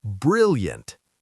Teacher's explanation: Two syllables. Stress on the first.